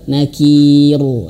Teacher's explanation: Ro-nya tipis, jangan sampai tebal.